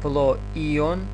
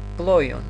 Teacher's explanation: Топлојон, кога е акцентиран дифтонг, значи акцентот се пишува на вториот дел, но меѓутоа акцентот го читаме на првиот дел на дифтонгот